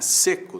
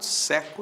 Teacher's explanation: Timbre é abertura, né? Seco tem timbre fechado, seco tem timbre aberto.